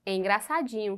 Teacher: ela tem a penúltima sílaba como sendo a sílaba tônica da palavra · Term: paroxítona